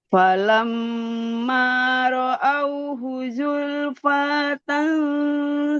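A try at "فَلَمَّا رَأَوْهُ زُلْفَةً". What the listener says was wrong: Tidak panjang. Ibu, tidak panjang.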